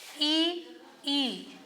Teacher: जिह्वा का अग्र भाग प्रयोग में आ रहा है